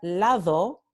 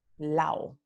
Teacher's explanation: en lugar de pronunciar lado con la aproximante, ellos pronuncian lao con elisión